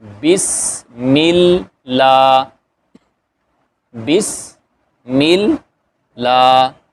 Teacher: لام کے اوپر کھڑا زبر ہے، وہ الف مدہ کے برابر ہوتا ہے، اس کو 2 حرکت کے برابر لمبا کریں گے